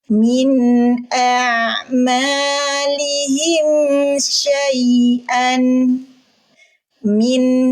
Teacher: Suara an dibunyikan dengan jelas. Kenapa? Nun sukunnya bertemu huruf hamzah. Huruf halki, huruf tenggorokan. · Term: nun sakinah